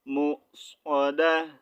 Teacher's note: مصعدہ یہاں پر پیش نہیں ریڈ کرنی تا کو ساکن کرنا ہے اور اس کا ساؤنڈ چینج کرنا ہے ہا میں